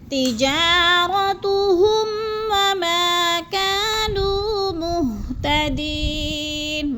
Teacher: ہم پہ غنہ نہیں کرنا، لفظ کو ظاہر کر کے پڑھنا ہے